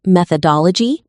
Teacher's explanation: practice blending the syllables smoothly and putting the strong beat on dole.